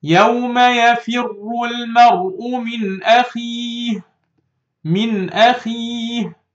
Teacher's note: I read it without any, you know, hiding or merging or any nasal sound. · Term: إظهار